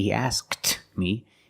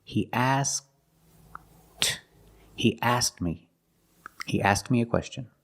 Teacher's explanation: We make the position of the K because the K is between consonants. He asked, I make the position, but I don't release. I don't say he asked me.